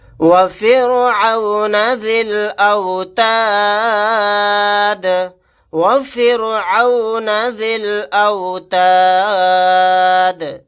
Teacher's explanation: ذال کو لام کے ساتھ ملا دیں گے، یا اور الف نہیں پڑھے جائیں گے۔